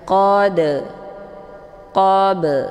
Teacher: Kemudian dal sukun dan ba sukun yang terdapat di pertengahan kalimat ini dinamakan dengan qalqalah sughra. Dibacanya dengan cara dipantulkan dengan pantulan ringan.